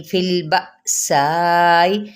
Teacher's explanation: حمزہ ساکنہ ہونے کی وجہ سے یہاں پہ جھٹکا دیا جائے گا